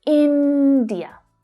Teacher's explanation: The stress there is on the first syllable.